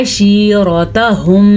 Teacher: را کو پر پڑھنا ہے اور ہا کو چھاتی سے نکالنا ہے۔